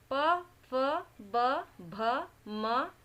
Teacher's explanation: इनका उच्चारण करते समय हमारे ओष्ठ आपस में मिल जाते हैं, तो इनका उच्चारण स्थान ओष्ठ है